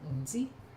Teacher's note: DZI glottal stop comes out as nzi. Short, high, no glottal stop at the end. I just cut it off quickly.